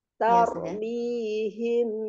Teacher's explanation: Jangan lupa mim sukun ketemu ba ikhfa safawi, disamarkan agak dengungnya ada ya.